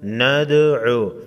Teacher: دال ساکن کو ہلا کر پڑھیں گے